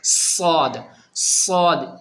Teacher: سواد کہتے کے ساتھ ہی یہ سین بن جائے گا اور غلط ہو جائے گا، سواد سواد، یہ ٹھیک ہے۔ سواد کو پڑھنے میں جس طریقے سے سیٹی کی آواز ہوتی ہے نا، بالکل کڑک، اس طریقے سے سواد کو پڑھنے میں آواز کا ہونا ضروری ہے۔